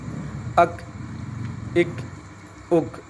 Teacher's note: اک یہ قلقلہ نہیں ہے, آواز روکنے کی کوشش کرنی ہے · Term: کاف